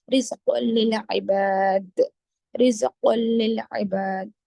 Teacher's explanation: تنوین کے بعد لام ہے، ادغام بلا غنہ، غنہ نہیں کریں گے